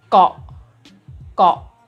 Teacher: hai Hai kok kok jadi rendah ya karena konsonan sedang apabila ditambahkan dengan suku kata mati akan menghasilkan nada rendah